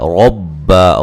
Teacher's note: را کو موٹا ادا کریں گے، را کو با سے سختی سے ملائیں گے